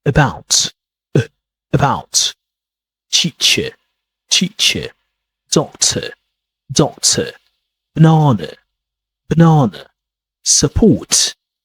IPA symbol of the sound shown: ə